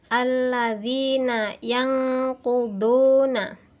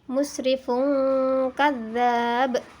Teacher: nun dibaca dengan suara eng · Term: ikhfa ab'ad